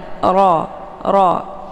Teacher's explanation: Kemudian ra ini karena harakatnya fathah, maka ra ini dibaca secara tafkhim, ya, atau dibaca tebal, ya. Jadi posisi ujung lidahnya terangkat ke langit.